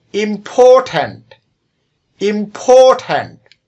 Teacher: উচ্চারণ করার সময় মাঝখানের যে সিলেবলটি এটির উপর আমরা বেশি জোর দিচ্ছি বা চাপ দিচ্ছি, এটাই হলো স্ট্রেসড সিলেবল।